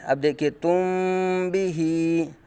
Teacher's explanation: میم ساکن کو با کے اندر اخفاء کیا جا رہا ہے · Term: اخفاء شفوی